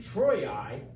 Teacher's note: the place of the J sound so here in Troy I because this I is between two vowels it gets treated like a j